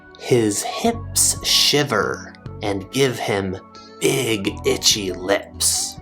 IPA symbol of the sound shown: ɪ